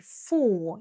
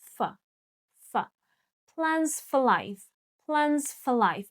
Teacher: you need to make it shorter because it is not a stressed word.